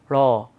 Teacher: যেমন আমরা যখন বলি র, খেয়াল করে দেখেন আমাদের জিহ্বার ডগাটা আস্তে করে গিয়ে মূর্ধায় একটা টোকা দিচ্ছে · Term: তাড়িত ব্যঞ্জন